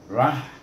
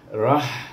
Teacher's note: bertemu dengan ha yang mati, rah. Bunyinya rah, ada hamas bunyinya